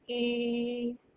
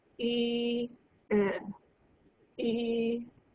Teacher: Feel how that first vowel feels and then say I e e. You should feel a great difference in the muscular activity where e you can really feel that muscle bunch up and tense whereas e definitely feels lax sort of relaxed.